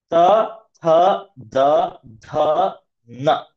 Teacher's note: ತ ಟೀತ್ ಅನ್ನ ಟಚ್ ಮಾಡ್ತೀವಿ ನಮ್ಮ ನಾಲಿಗೆಯ ತುದಿಯಿಂದ